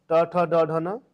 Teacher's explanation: ट, ठ, ड, ढ, न हो गया। यह आते हैं मूर्धा में।